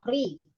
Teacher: Baik di awal kalimat, di tengah kalimat, atau di akhir kalimat. Pokoknya kalau ro berharokat kasrah, maka dibacanya adalah tarkik atau tipis.